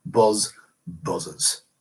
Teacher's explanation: pluralize this by adding a vowel between the first Z sound and the second Z sound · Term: vowel epenthesis